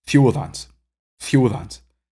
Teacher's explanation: I'm pronouncing it as a single almost like a single cluster not really a single vowel but two vowels which just makes up a single nucleus